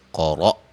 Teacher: قاف کو موٹا، را کو موٹا، حمزہ کو یہاں جھٹکے سے پڑھیں گے۔ جھٹکے کا مطلب یہ نہیں ہے قلقلہ، حمزہ پہ قلقلہ کیا جائے، جیسے مثلا قَرَ ایسے آواز نہیں آئے گی۔